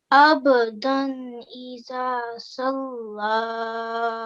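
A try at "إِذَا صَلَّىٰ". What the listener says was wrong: Well done, well done.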